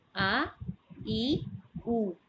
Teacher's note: الف خالی منہ سے ادا ہوتا ہے